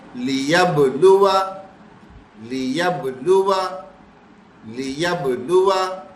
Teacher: قلقلہ کریں گے، با پہ ساکن آ رہا ہے نا